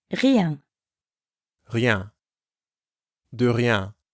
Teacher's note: rien has the French R sound, which comes from the back of the throat, and ien, the nasal sound you hear in bien